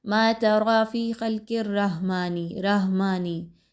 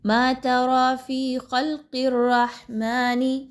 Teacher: ہا کا مخرج اچھے طریقے سے ادا کیجئے حلق کے درمیانی حصے سے. ہا، اگر آپ اس پہ جزم لگائیں گے تو آپ کی ادائیگی اچھے طریقے سے ہو پائے گی اور آپ کو مخرج فائنڈ آؤٹ کرنے میں آسانی ہوگی.